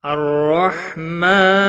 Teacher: الرحمن، را زبر کی وجہ سے پر پڑا جائے گا، ہا ساکن کو ہلانا نہیں، میم کے اوپر کھڑی زبر ہے، ایک الف کے برابر کھینچ کر پڑھیں گے۔ وقف کی صورت میں نون ساکن پڑھا جائے گا، وقف بالاسکان ہوگا، 3 سے 5 الف کے برابر کھینچ کر وقف کریں گے۔